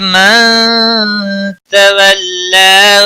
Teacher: نون ساکن کے بعد حروف اخفا کا تا آیا ہے، اخفا حقیقی ہوگا.